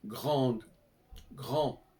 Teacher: grande, grand au masculin, on n'entend pas le D, on l'entend au féminin. Donc c'est ça que j'appelle la double prononciation.